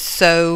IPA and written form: soʊ (so)